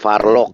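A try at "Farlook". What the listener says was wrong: Farluk bukan Farlok. O2 itu bacanya U, Farluk.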